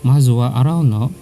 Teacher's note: No here is pronounced in rising intonation.